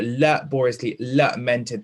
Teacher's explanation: So laboriously lamented, those vowel sounds of the A are the same, okay? And that very long vowel sound creates like a drawling tone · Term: assonance